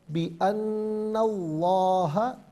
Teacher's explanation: لفظ اللہ کی لام سے پہلے والے حرف پر اگر زبر یا پیش ہو تو پر پڑھتے ہیں، زیر ہو تو باریک پڑھتے ہیں. یہاں زبر ہے تو لفظ اللہ کی لام کو پر کر کے پڑھا جائے گا